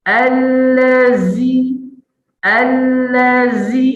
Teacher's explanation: Huruf zai ni dia punya desir dia kuat.